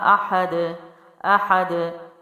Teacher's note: دال حروف قلقلہ میں سے بھی ہے، یہاں باؤنس کیا جائے گا دال کو